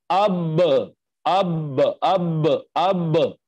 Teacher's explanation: मिसाल के तौर पर हमजा जबर बा अब अब अब अब, तो आपने देखा कि दोनों जो होंठ हैं हमारे उनका अंदर वाला तर हिस्सा मिलता है तो बा का मखरज अदा होता है